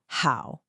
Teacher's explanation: Make sure you're pushing air from the back of your throat. It's an aspirated sound. How? You should feel that puff of air. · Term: the h sound, H sound